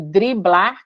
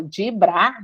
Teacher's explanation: E da mesma forma que a gente vai falar programa, sem esse rzinho ou programa, um desses aqui vai desaparecer. Ou a no caso de driblar, que a gente ainda fala dibrar, não só some com rzinho, mas faz um dia, né?